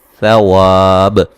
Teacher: ثا کو نرم ادا کریں گے، سیٹی نہیں، یہاں سیٹی کی آواز پیدا نہیں ہوگی